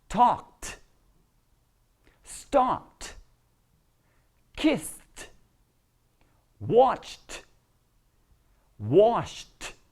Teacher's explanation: if you're using voiceless sounds before the IDI you're gonna pronounce it like a T